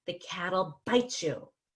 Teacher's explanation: instead of saying bite you you can say bite you so the T and the Y blend together to become a CH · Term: blending